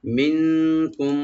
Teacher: মিন এখানে নুন সাকিন আমরা ইখফা করব